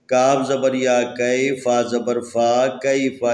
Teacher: یہاں پر یا حروف مدی میں سے ساکن ہے، اس سے پہلے زبر ہے، لذا اس کو لین پڑھنا ہے